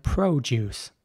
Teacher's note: In American English, it would be more like produce. So the O is very round.